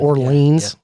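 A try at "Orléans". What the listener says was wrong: Orleon. If you're going to pronounce it like it's French, you don't pronounce the S. It's Orleon.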